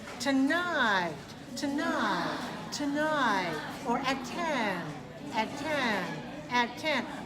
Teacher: I'm going rising on the key syllable the stressed syllable and then I'm falling so two-night has two syllables stress on the second to run